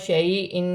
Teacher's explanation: یا ساکن سے پہلے زبر یالین بنے گی، اسے کھینچا نہیں جائے گا